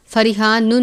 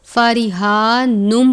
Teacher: فارحانم، تنوین کے بعد میم مشدد ہے، یعنی تنوین کے اوپر میم کے اوپر تشدید کی علامت ہے، اس لیے میم مشدد ہے۔ تنوین کو میم مشدد سے ملا کر غنہ کر کے پڑھیں گے۔ جب ہم غنہ کریں گے تو پھر ہم فریحان نون نہیں پڑھیں گے بلکہ فریحان نم پڑھیں گے۔